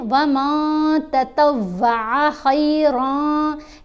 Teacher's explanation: نون کی آواز کو ناک میں چھپا کر پڑھنا ہے اور ایک حرکت کے برابر ٹھہر کر پڑھنا ہے